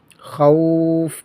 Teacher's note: واو لین ہے، اس کے بعد سکون عارضی ہے، تو یہاں پر مد لین عارض ہوگا